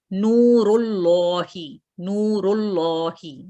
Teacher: ये लाम मोटा पढ़ा जाएगा।